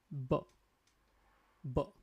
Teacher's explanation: two lips will touch together